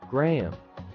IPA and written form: ɡraɪm (grime)